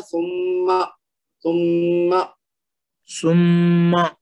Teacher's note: اس کا میم کو زور دے کے غنہ کے ساتھ ادا کرنا ہے، اور پھر بعد میں لمبا نہیں کرنا، جب زبر پہ آئیں گے نا تو ایک حرکت ہے، تو اس کو پڑھنا ہے سما سما سما.